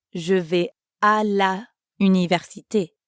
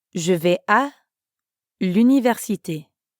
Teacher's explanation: we connect la and université to make l'université